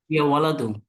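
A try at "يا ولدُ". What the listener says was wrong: ভাই আবার দুই পেশ দিয়ে দিলেন কেন? এক পেশ।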